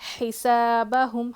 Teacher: ہا کی آواز حلق سے, بیچ کے حصے سے سین میں سیٹی کی آواز